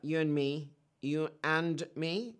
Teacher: the d sound of the word and was not included in the transcription that's because it's isn't usually pronounced in this phrase in this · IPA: [juənmi]